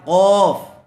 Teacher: اس کو بڑا قاف یعنی اس کو پر کر کے پڑھیں گے، منہ بھر کے آواز نکالیں گے